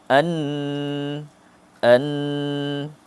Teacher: setelah kita faham kedudukan huruf nun tepi hujung lidah, kedudukan yang sama, cuma kita dengungkan dia. An. Kalau huruf mim kita tutup bibir.